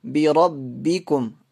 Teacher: را موٹی پڑی جائے گی